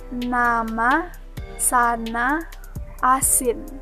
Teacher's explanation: selanjutnya yaitu huruf N konsonan n merupakan konsonan nasal dental yang dibentuk dengan menempelkan ujung lidah pada gusi untuk menghambat udara dari paru-paru kemudian dikeluarkan melalui rongga hidung